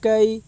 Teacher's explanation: یا ساکن سے پہلے زبر ہے اس لیے یالین ہوگی، یالین کو نرم آواز کے ساتھ جلدی ادا کریں ، معروف پڑھیں مجہول آواز سے بچیں، فا کے اوپر زبر